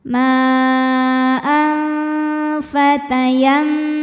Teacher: Karena ada tanwin fathah menghadapi huruf fa. Maka tanwinnya bunyikan samar-samar disertai dengungan. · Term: ikhfa ausath